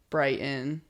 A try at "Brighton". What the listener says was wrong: Not Brighton. Brighton. That's as northeast as you can get. Brighton, Button, Mountain. There's no T's in anything.